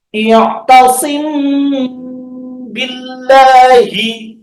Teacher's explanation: Menyamarkan suara apa mim sukunnya itu di bibir langsung karena sama-sama tempat keluarnya di bibir. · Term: ikhfa syafawi